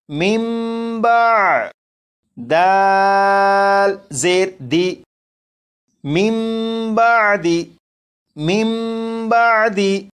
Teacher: یہاں پر نون ساکن کو میم سے بدل کر غنہ کر کے پڑھا، یہ اقلاب کے قاعدے کے مطابق پڑھا گیا